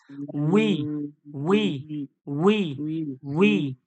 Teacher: ঠোঁটটা গোল করে সামনের দিকে আওয়াজ দেন